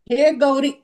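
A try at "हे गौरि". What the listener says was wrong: హ్రస్వ ఇకారం హ్రస్వ ఇకారమైంది. కాబట్టి సరస్వతి అన్నది ప్రథమా విభక్తిలో ఏకవచనంలో ఈ దీర్ఘమే, కానీ సంబోధన వచ్చేటప్పటికి అది హ్రస్వం అవుతుంది.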